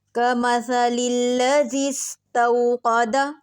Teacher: زال نرم پڑھا جاتا ہے اور باریک